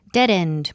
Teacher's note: that's two words dead end but we connect them it almost sounds like one one word